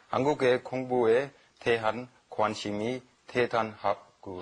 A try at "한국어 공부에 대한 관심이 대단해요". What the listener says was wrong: And it's 한국어, right? Not 한국에, right?